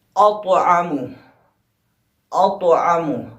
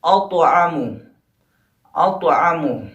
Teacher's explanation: اطعم، اطعم، الف کے بعد طا، طا پہ ساکن، کیونکہ لفظ جو ہے لفظ کے بیچ میں آیا ہے طا، اور طا حروف قلقلہ میں سے ہے، اس لیے یہاں پہ قلقلہ صغریٰ ہو گیا، یعنی یہاں پہ ٹکراؤ کم ہوگا